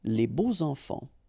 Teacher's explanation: even if you've got this X, well, phonetically it will be like Z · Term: liaison